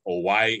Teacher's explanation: we've got no glottal stopping between the o and the i so it's perfectly fine to continue the uh breath with oi